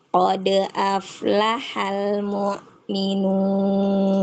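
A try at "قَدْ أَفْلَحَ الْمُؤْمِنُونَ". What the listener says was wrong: Ya, mu bukan ke bawah dengan ain atau tercampur dengan ain. Mu'minun gitu Bu.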